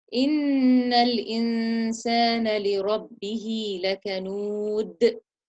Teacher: So the لِرَبِّهِ, the ra is lifted.